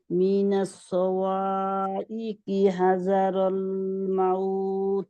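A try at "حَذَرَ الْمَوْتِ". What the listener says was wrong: হাজা হয়ে যাচ্ছে, হা দাল, জালের জিব্বাটা বের হবে। হাজারল মাউত।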